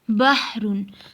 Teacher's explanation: ہا کی آواز درمیانے حلق سے رگڑ کھا کر نکلتی ہے